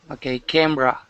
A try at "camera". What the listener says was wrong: Excellent. Okay, nice job. Very good.